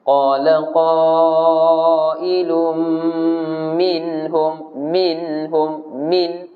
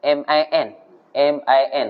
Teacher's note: Jangan duk pergi masuk dengan huruf H tu, tak mau. Dijelaskan N dulu, baru masukkan H. Jelaskan Nun, baru masuk H. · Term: izhar halqi